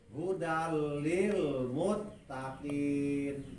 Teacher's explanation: idgham bilaguna eta sakur idgham anu teu make guna, teu make dengung kana irung. Hurufna aya dua, hiji lam, kadua ro.